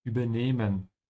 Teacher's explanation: You can also know that because there's an H after it, so the E has to be a bit longer